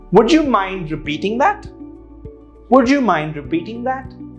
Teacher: Notice the intonation there. The rising tone or the rising intonation shows that it's a question, and keep it soft. By doing this, they know that you're requesting and not ordering them to do it.